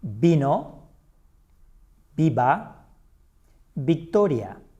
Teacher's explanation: In Spanish, the V is pronounced the same as B.